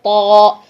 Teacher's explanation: और वही चीज जो मैंने आपको पहले बताई कि ता के लिए आवाज सीधी मुंह से बाहर आती है, ता, ठीक है। और जो तौ है उसके लिए आवाज का प्रेशर पीछे हल्क की तरफ जाता है, तौ। तौ, ठीक है, ये चीज होगी तौ, इस तरीके से।